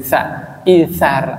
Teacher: ujung lidah ketemu ujung gigi seri